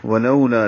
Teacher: لو وولین ہے، ہونٹوں کو گول کریں گے، آگے لائیں گے، لا الف مدہ ہے، 2 حرکات لمبا ہوگا۔